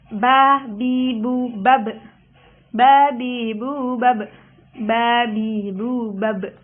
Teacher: Makharijul huruf dari huruf ba ini ialah syafatain, yang artinya dua bibir. Disebut asyafatain karena tempat keluar huruf-hurufnya itu berasal dari bibir.